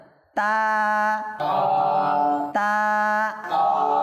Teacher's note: বুঝা আসছে? তাটা কোথা থেকে? জিহ্বার আগা এবং উপরের দাঁতের গোড়া, উপরের দাঁতের গোড়া